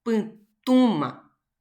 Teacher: Putuma. También fuerza de pronunciación en la U y también acento nasal